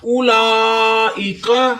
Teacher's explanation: لا پہ مد بھی ہو رہی ہے اور کھڑی بھی ہے، ڈبل لمبا کرے